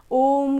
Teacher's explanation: उससे तिगुना समय लगेगा इसलिए उसको प्लुत स्वर बोला जाता है जैसे हम ओम का उच्चारण करते हैं तो उसमें उ के जगह पे उसको थोड़ा देर तक बोलते हैं तो यही होता है प्लुत स्वर